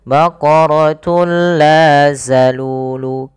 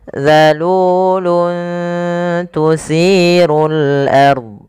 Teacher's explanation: Agar lebih tepat di dalam melafalkan huruf zal, ujung lidah kita itu tempelkan saja ya dengan gigi sari sehingga za terbunyikan dengan huruf zalnya